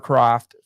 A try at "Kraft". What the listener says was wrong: Kraft. It's Kraft, not Croft. Yeah, you said Croft.